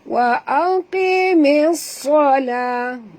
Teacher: Bila kita sebut mis tu tebal ya sahabat, kerana huruf sad ni memang huruf isti'la ya.